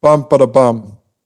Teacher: you get this thing called a choriamb, which is long, short, short, long. So it kind of goes bum, ba da bum.